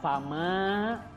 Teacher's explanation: ma itu harus dibaca panjang 2 harokat, namanya mad tabi'i